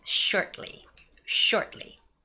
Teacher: word shortly I noticed some people might say shortly shortly but you don't say the sound T that clearly just make the stopping sound